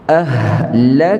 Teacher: Ahlakna, lepaskan angin, bukan alih makhraj. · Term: hamas